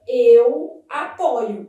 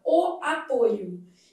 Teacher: no verbo apoiar, a forma de primeira pessoa do presente do indicativo apresenta a letra O aberta